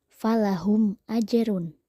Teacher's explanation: mim mati bertemu Alif maka harus dibaca jelas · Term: izhar syafawi